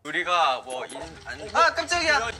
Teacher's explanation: And did you also notice how he made his voice go up really high when he was yelling? It's like yelling, but instead of raising his volume, he tends to raise his pitch.